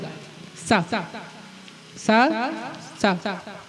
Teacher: तालव्य स। तालू से स छुआ रहा है, सा दांत से नहीं छुआएगा, तालू से छुआएगा।